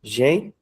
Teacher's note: a sílaba forte não é a última, né? E nem é a antepenúltima, mas sim a penúltima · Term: paroxítona